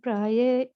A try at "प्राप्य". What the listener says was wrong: तत् प्राप्य है, प्राय नहीं है, प्राप्य है।